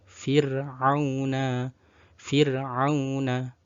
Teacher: huruf ro sukun yang berada di tengah atau akhir kata dia itu didahului kasrah maka dia dibaca tarqiq atau tipis